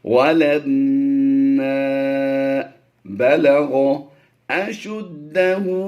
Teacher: उल्टा पेश की वजह से हम लंबा कर रहे हैं, खड़ी हरकत को लंबा करके पढ़ते हैं।